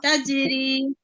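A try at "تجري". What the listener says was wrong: রিটা টান হবে, এখানে একটা কলকলা আছে।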